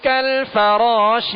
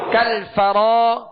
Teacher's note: را کو پر پڑھیں گے. را کے آگے الف مدہ ہے، ایک الف کی مقدار کھینچیں گے